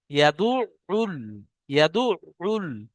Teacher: আপনারা আইনের মাখরাজ পড়েছেন, যে এই যে কণ্ঠনালী আছে, কণ্ঠনালীর 3টে ভাগ বলা হয়েছিল, যে একটা শুরু ভাগ, একটা মধ্য ভাগ, একটা শেষ ভাগ। হামজা হা, আইন হা, এটা মধ্য ভাগ হতে উচ্চারণ হয়